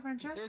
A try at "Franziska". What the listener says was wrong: There's no C! Franziska Von Karma. Franziska. That's what it says to me. It says Franziska.